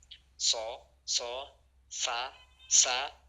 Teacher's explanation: Nah, menyebutkan huruf sh itu agak susah karena dia ee bunyinya tajam dan mengucapkan hurufnya itu harus melewati tempat sempit di antara lidah dan langit-langit mulut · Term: saofir